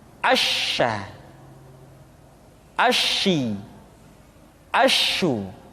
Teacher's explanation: Dan sifat yang dimiliki oleh huruf sya yang paling nampak adalah apa yang disebut dengan sifat at-tafashi, yaitu menyebarnya angin di dalam mulut kita.